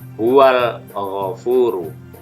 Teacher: alif lam yang dibaca jelas, terdengar alnya pada huwal ghafuru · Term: alif lam qamariyah